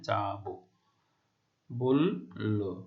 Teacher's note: ক্রিয়াপদের অন্ত ও সাধারণত সংবৃত বা ও এর মতো উচ্চারিত হয়